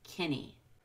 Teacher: You don't even need the H in he.